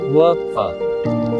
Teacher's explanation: दंतोष्ठ्य निचले होंठ व ऊपरी दांतों से